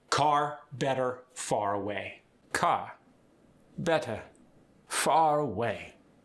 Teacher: The transatlantic accent is a selective R accent. The R before a vowel stays. The R at the end of the word, get rid of it.